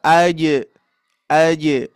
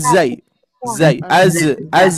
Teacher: Tengah lidah ya lidah tengah tengah lidah hati-hati bukan ujung lidah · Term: Jim